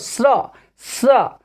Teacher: तालव्य स का उच्चारण तालु से होता है, जीवा आगे तालु को छूती है, वैसे बोलो स्र स्र।